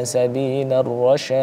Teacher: Mad arid li sukunnya dulu, baru kemudian kolkolahnya.